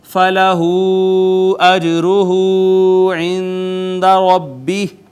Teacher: جیم پہ قلقلہ ہے، واو المدیہ صغیرہ ہے، نون ساکن پہ اخفا